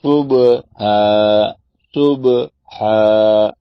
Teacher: یہ صبح یہ ہے قلقلہ. صبح زور دے کے با کی آواز ٹکرا کے واپس آئے، ایکو ساؤنڈ بنے. صبح 3 قلقلے ہو گئے.